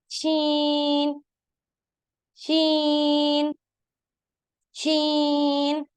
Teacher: जुबान का दरमियान ऊपर की जानिब तालू के दरमियान से लगेगा